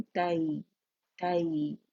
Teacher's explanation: या सेकंड से पहले फतह आएगी तो आवाज एक काउंट के लिए ऊपर जाएगी और फिर नरमी से या के साथ मिलाएंगे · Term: यालीन